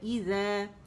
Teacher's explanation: ذیل کی آواز کو دو کاؤنٹ کے لیے اوپر کھینچے گا. ایزا، ایزا کر کے نہیں پڑھیں گے اور ایزا بھی نہیں پڑھیں گے، ٹھیک ہے. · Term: الف ممدودہ